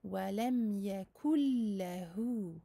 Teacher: nous passerons du kef avec sa dammah directement au lemme sans aucune nasalisation. Wa lam yakul lahu, en n'oubliant pas bien sûr la shadda du lemme.